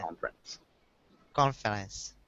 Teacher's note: we don't pronounce the E the first e so just sounds like conference conference close so just two syllables